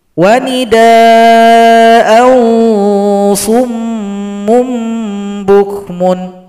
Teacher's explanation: Tapi kalau kita sambung, maka an dibaca dengung kepada huruf shad, dibaca ikhfa hakiki.